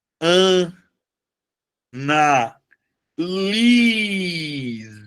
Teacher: No caso do verbo, a sílaba tônica, ela passa a ser a penúltima.